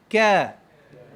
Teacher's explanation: Huruf kaf, huruf yang keluar angin daripada mulut. Bila kita sebut tu dia keluar angin.